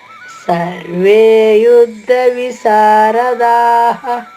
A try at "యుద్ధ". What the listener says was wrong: యుద్ధ అక్కడ మహాప్రాణి అక్షరం ఉందమ్మా.